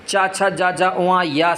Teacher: तालव्य से उच्चारण होने वाले सभी वर्ण